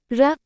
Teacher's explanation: जिस व्यंजन के उच्चारण में जिह्वा की नोक वायु से रगड़ खाकर कांपती रहती है, उसे प्रकंपित व्यंजन कहते हैं।